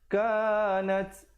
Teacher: nat ada hamasnya bunyi angin di situ